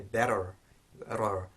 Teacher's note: So where in British English we would say better and use the T as a standard T, in American English you might hear better, rar. So that you can hear that flap that's being made with the tongue and the alveolar ridge. That's the ra sound.